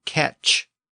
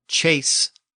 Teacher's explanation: The Norman word catch ends in a CH sound, whereas the Parisian word chase ends in an S sound.